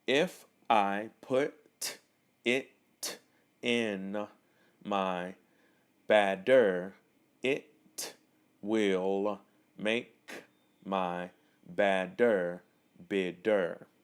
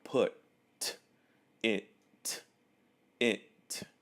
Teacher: I really made these T's sound very clear and I separated them for the word so you can really hear the T sound